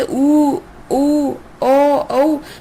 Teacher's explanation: हमारा मुंह एक वृत्त की तरह खुलेगा, इसी कारण इसे वृत्ताकार स्वर कहते हैं